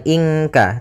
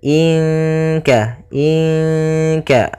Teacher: Sehingga kita samarkan saja nunnya kepada makhraj daripada kaf. Maka bukan ingka tapi dia inka inka langsung ke huruf kafnya in kanat. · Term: ikhfa